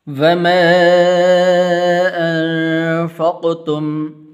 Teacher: یہ چھوٹی مد ہے، اس کو ایک الف کے برابر لمبا کرتے ہیں